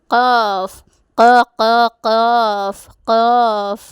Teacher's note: ഖാഫ് എന്ന അക്ഷരം പുറപ്പെടുന്നത് നാവിൻ്റെ അങ്ങേയറ്റത്തെ മേൽ അണ്ണാക്കിനോട് ചേർക്കൽ കൊണ്ടാണ്